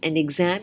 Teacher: you have clubbed two words together so that your emphasis, your stress is on exams